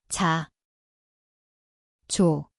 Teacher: 아, 오, Siin on täht. 지읒, See kõlab nagu je, koht on igemed suulg, afrikaat.